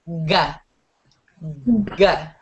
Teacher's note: both the G and the K sound are going to come from the back of your mouth or the back of your throat. What you want to do in order to produce both of these sounds is you don't really use your tongue a lot.